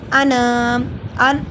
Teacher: अन हमज़ा को लंबा नहीं करना, सिर्फ नून को करना है, क्योंकि अलिफ से पहले ज़बर है, हरूफ मद एक अलिफ के बराबर लंबा होगा।